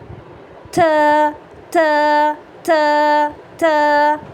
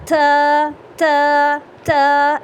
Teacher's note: اس میں ایک ایئری ساؤنڈ آئے گی، یعنی کہ ہماری جو ساؤنڈ ہے اس کے ساتھ ساتھ ہماری جو ایئر ہے وہ بھی ریلیز ہوگی، جیسے کہ یہ والی جو ساؤنڈ ہے یہ میں زیادہ کر کے بتا رہی ہوں، اتنی زیادہ نہیں ہوگی، لیکن اس طرح کی کچھ ساؤنڈ آنی چاہیے، ٹھیک ہے؟